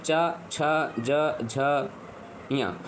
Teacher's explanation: ये इसकी जो है आवाज कहां से आ रही है तो इसकी तालव्य से आ रही है तो इसीलिए ये तालव्य वर्ग कहे जाते हैं